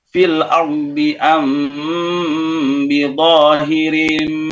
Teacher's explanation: ketika mim sukun ketemu ba itu kan harusnya dengung